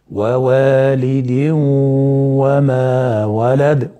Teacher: وجوب الادغام، ادغام التنوين في الواو هكذا مع الغنة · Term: ادغام ناقص